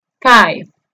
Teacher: Ojo que la pronunciación de la V o V chica en inglés es parecido a nuestra F, pero es más vibrante. Se pronuncia casi como si estuviésemos mordiéndonos los labios inferiores con los incisivos superiores.